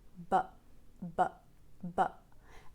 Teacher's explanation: but but is a short quick sound um in the center the tongue is in the center and then you don't move the tongue anywhere to stop the sound you simply well it's not that simple but you use the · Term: glottal stop